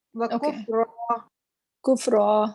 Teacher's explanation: کفرا میں بھی را موٹا پڑیں گے بیکاز اس پہ زبر ہے